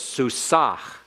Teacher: you have to pronounce the mapik by putting some breath in that last hey